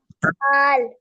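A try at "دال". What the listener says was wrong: दाल, माशाल्लाह।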